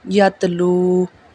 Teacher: یتلو میں جو واو ہے واو سے پہلے واو ساکن ہے اور واو ساکن سے پہلے پیش ہے تو یہاں پہ واو مدہ ادا ہوگا،